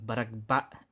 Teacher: you have to have that glottal stop at the end